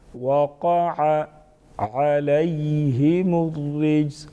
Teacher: یا لین جلدی پڑھیں گے اور نرمی کے ساتھ ادا کریں گے. یا ساکن سے پہلے حرف کی اوپر جب زبر آ جائے اس کو یا لین کہتے ہیں.